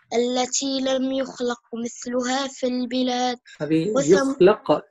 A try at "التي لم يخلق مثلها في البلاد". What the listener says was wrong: يخلق مثلها بدون ضمة